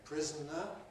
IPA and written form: ˈprɪz.n̩.ə (prisoner)